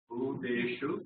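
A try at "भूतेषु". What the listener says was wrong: Bhu. Konjam with the force, okay? Bhuteshu.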